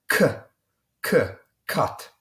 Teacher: a hard K it's somewhat unlike the English K it's a it's harder it's more aspirated